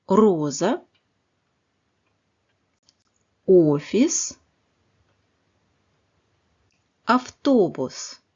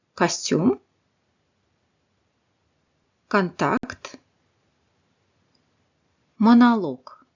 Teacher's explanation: le O non accentué se prononce presque comme un A.